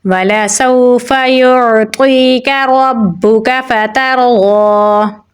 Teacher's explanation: تا کو باریک پڑھیں گے اور را کے ساتھ ملائیں گے کیونکہ را کے اوپر جزم ہے۔ را کو پر یعنی موٹا پڑھیں گے، ضاد کو بھی موٹا پڑھیں گے، کھڑی زبر ہے تو اسے ہم لمبا پڑھیں گے